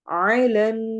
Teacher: नून पर हम गुन्ना करेंगे, नाक में आवाज लेके जाएंगे, लंबा करेंगे, ना में अलिफ को लंबा करेंगे, और आखिर में रॉ।